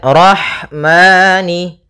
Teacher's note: Pada lafal rahmani ada ha sukun. Maka di sini ha mempunyai sifat yaitu sifat hames. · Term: sifat hamas